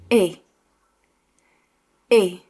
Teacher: E is usually softer and shorter than the English.